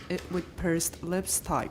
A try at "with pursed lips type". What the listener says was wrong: That's right.